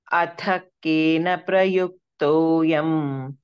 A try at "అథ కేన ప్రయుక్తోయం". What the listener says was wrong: హే second ఖా అంటున్నారు normal గానే, థ ప్రెస్ చేయండి. అథ కేన ప్రయుక్తోయం,